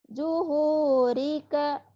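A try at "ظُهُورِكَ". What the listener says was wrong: Zoknya agak rapuh. Zuhu. Zuhurika. Zuhurika.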